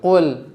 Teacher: Qul, ya, jangan qul, harus qul. Nah, tebalkan huruf qaf, tipiskan huruf lam.